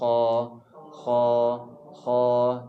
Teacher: kita nak Kha ni di hujung kita punya kerongkong ya jangan masuk kepada pangkal Lidah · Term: hujung kerongkong